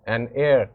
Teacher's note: in the example of heir, we know that h is silent, it's giving the sound of a vowel, so that's why we used an before it.